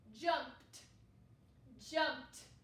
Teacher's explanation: the second sound ed makes is the same as a t sound